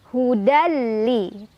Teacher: dengan huruf lam cara bacanya tanwin fat hanya leburkan atau masukkan ke huruf lam tanpa berdengung artinya enggak boleh ditahan dulu cukup tekan aja